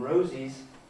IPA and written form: ˈrəʊziz (Rosie’s)